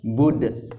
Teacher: huruf Dal adalah qalqala ya kalau kita berhenti pada huruf qalqala maka harus dipantulkan